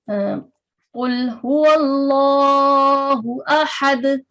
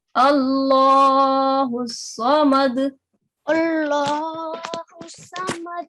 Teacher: No, we will recite it in a thick voice because the previous letter before this Lam, Lamul Jalala, previous active letter is carrying a fatha. So we will recite it in a thick sound with a rounder mouth